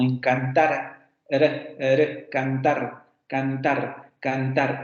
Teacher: nosotros tenemos la múltiple y tendríamos la vibrante simple